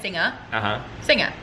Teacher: Because I don't pronounce my ER, so I pronounce it as an A. But you move over the G.